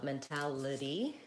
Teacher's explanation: A lot of times in those words with liddy, the TY is a flap T. So it kind of sounds like mentality. It sounds like liddy at the end.